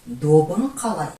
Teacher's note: Добың қалай. «П» переходит на «б»